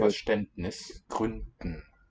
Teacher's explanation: The D there in Gründen and also I think in Verständnis should be a voiceless one. Because it's underlyingly in a coda. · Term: devoicing